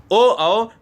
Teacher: ओ औ कंठ्योस्ट या कंठ ओष्ठ है ना। क्योंकि ओ कंठ से आवाज आ रही है।